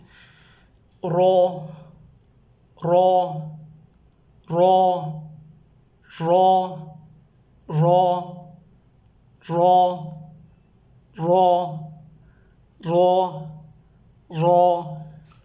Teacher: طرف اللسان کی پشت کو آپ ان 4 دانتوں کے مسوڑوں کے ساتھ ٹچ کریں جو تالو کی جانب مائل ہے، تو یہ را ادا ہوگا. تکریر اس میں نہ لائیں.